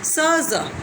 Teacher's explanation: स ज produce with the sides of the front of the tongue. ये जो है टंग की फ्रंट की साइड्स से प्रोड्यूस होते हैं.